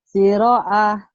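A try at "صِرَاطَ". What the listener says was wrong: Siroa bukan, ini panjang. Siroa. A-nya itu panjang ya, Bu. Siroto. Ini alif baris ini punya to ya. Siroto. Ibu baca siroa. Tapi nggak ada siroa. Terus barisnya nggak ada ini ya. Ini nggak mungkin siroa. Siroto.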